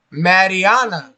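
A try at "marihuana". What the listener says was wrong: Pronounce the H. People who says marijuana, it's like they put a G or something like that.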